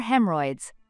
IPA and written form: ˈhem.ɚ.ɔɪdz (hemorrhoids)